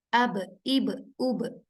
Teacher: ba ada sifat qalqalahnya ketika dia sukun